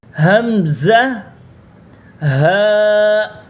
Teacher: حمزہ، ہا، یہ جو دونوں حروف ہیں یہ سینے کی طرف سے نکلیں گے